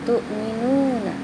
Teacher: ada waw mati, namanya mad tabi'i, panjangnya 2 harakat